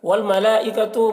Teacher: ملائکہ میں مد متصل ہے کیونکہ حرف مد کے بعد حمزہ اسی کلمہ میں ہے تو مد متصل کو 3-4 الف کے برابر کھینچ کر پڑھتے ہیں